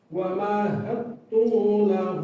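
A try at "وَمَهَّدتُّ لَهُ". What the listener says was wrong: Tunya jangan panjang-panjang. Tunya masih kepanjangan tu la. Nah, langsung aja. Pendek.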